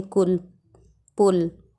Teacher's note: छोटा ऊ की मात्रा बोलते समय शब्द पे जोर नहीं देते हैं